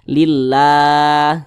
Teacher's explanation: ah tanda baca kasrah atau tanda baca baris ke bawah maka kalimat Allah itu dibaca tipis dibaca tarkik